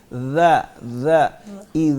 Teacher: جب ہم نے زال بولنا ہوتا ہے تو اوپر کے دانتوں کو ادھر اندر والی سائڈ پہ زبان لگائیں گے. ذا ذا اذا، اس کو زا نہیں بولنا.